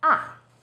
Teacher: tone is even lower it first steps down then rises ah fourth tone starts high then falls sharply